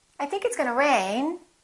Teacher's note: If I say it the second way, with my intonation going up, with the pitch going up, it sounds like something else is coming, like I'm not finished speaking.